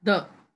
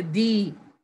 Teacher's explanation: Normally, we pronounce the with a short sound. We say the. But when it comes before a vowel sound, we pronounce it as long. We say the.